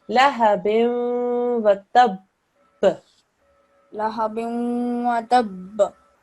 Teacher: And this, quite rightly, you did do qalqala on this, this is a mushaddad ba. When we do qalqala on a mushaddad ba, we have to press down a little bit longer, okay, than a normal qalqala.